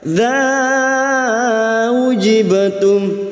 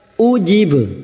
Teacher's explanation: hamzah sifatnya siddah, harus dibaca jelas